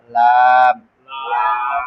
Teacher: জিহ্বার আগার কিনারা সামনের উপরে সামনের উপরে দাঁতের মারির সঙ্গে লাগাইয়া